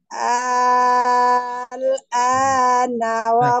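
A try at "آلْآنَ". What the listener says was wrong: kurang, 6 harakat. 6 harakat, 6 harakat. Kurang.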